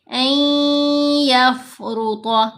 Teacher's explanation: ان تو نہیں پڑھنا، نون کو ہی تو مرج کرنا ہے، لیکن ساتھ غنہ کریں گے. حمزہ کو یا سے ملاتے ہوئے آواز کو 2 حرکات کی مقدار لمبا کریں گے. غنہ آواز ناک میں پڑی جائے گی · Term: ادغام